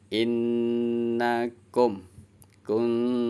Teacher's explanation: Menyamarkan huruf nun atau tanwin sebab bertemu dengan huruf ta. Cara bacanya, nun sukunnya atau tanwinnya disamarkan dan dengung. Jadi samar-samar dengung. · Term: ikfa hakiki